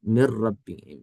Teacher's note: یہ بلا غنہ ہے، اس کے اندر غنہ نہیں ہو رہا